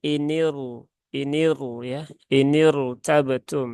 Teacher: Sehingga di sini rnya kalau secara standarnya itu dia tipis tapi karena ini kasrahnya kasrah Arid maka rnya dibaca menjadi tebal Jadi bukan inir tabtum tetapi inir inir ya inir tabtum ya